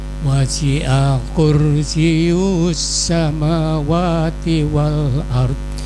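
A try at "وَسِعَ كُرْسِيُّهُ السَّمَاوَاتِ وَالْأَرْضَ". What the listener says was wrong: Kursiyuhu, ya-nya ditekan lagi. Wasi'a kursiyuhu. Wasi'a kursiyuhu samawati wal ard.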